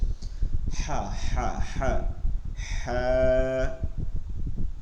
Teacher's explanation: গলার মধ্য থেকে বাতাস বের করে নিয়ে আসতে হবে